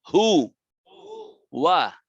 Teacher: ঠোঁট গোল করে পড়তে হবে ওয়াও, আর ঠোঁট মেলে দিয়ে পড়তে হবে জবর ওয়া।